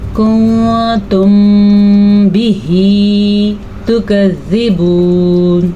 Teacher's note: میم ساکن کے بعد حرف با آ جائے تو وہاں پہ اخفاء شفوی کا قاعدہ ہوتا ہے, وہاں پہ غنہ بھی ہوتا ہے اور ہونٹ بھی بند ہوتے ہیں, دونوں چیزیں ہوتی ہیں.